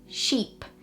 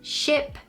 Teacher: the vowel sound in sheep is a lot longer than the vowel sound in ship